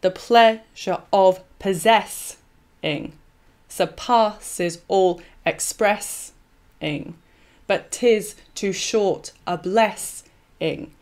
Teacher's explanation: the stressed part of the final metrical foot is not uh is removed so what's left is an unstressed sort of hanging extra syllable · So the ending of all the non-B rhyme lines is doubly de-emphasized because the final beat is removed. And what is left as the line's final sound is an unstressed syllable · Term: catalectic